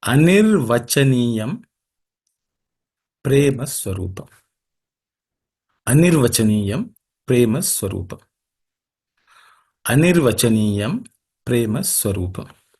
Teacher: In this sutra, there are no aspirated consonants, so it should be easy for every one of you to say it correctly.